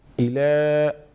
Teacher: इला खड़ी हरकत एक अलिफ के बराबर खींचेंगे।